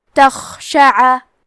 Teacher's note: کلمت تخشع میں خا کی ادائیگی حلق کے اوپر والی حصے سے ہے. خا حروف تفخیم میں سے ہے تو ہم یہ حرف کو موٹی آواز میں پڑھیں گے. کیونکہ یہاں خا ساکن ہے تو ہمیں خا کو ہمزے سے پڑھنا ہے.